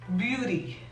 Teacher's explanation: la T se pronuncia como R cuando está en medio de las palabras